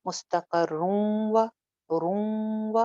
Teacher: یہاں پہ ناقص ادغام ہوگا، یعنی کہ نون کی تھوڑی سی آواز باقی رہ جائے گی